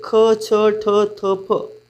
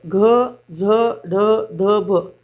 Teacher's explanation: ज्या वर्णांचा उच्चार करण्यासाठी फुफ्फुसातील हवा जोरात बाहेर फेकली जाते त्या वर्णाला महाप्राण असे म्हणतात